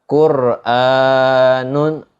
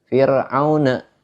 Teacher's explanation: Beda ketika kita baca kalimat fir'auna, ro-nya itu tipis.